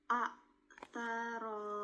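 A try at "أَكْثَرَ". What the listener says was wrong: Bukan a tapi aktsaro. Aktsaro. Sa. Aktsaro kurang maju makhrajnya. Pangkal lidahnya kurangkan pangkal lidah bertemu dengan langit-langit yang lunak dengan yang kasar.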